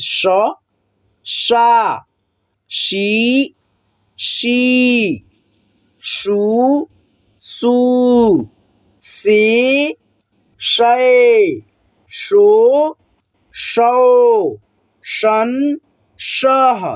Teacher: इसके उच्चारण करने में जो है आपका जीभ तालु में सटेगा, ठीक है, इसीलिए इसको हम लोग तलाबे श बोलते हैं, ठीक है।